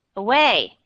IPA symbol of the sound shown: ə